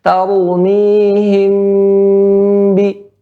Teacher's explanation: Di sini, ya, ada contohnya tughfal mim as-sakinatu bi ghunnatin idza ata ba'da harfun wahidatun wa huwal ba. Ya, huruf mim, ya, maka disamarkan apabila datang setelahnya satu huruf, yaitu huruf ba